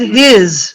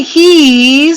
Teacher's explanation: His is very short. He's is very long.